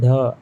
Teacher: जीभ का अगला भाग उलट कर मूर्धा से स्पर्श होता है। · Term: द्विगुण व्यंजन